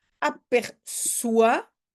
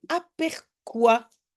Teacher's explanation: je veux prononcer le C comme S et avant le O normalement je je prononce comme k